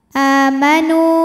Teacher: maka huruf Dal panjang dua harakatzi yauh a mad badal karena ada Hamzah yang dipanjangkan maka ini panjang a-nya dua harakat